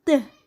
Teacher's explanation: Selanjutnya, alveolar plosive. Contoh bunyinya bunyi t.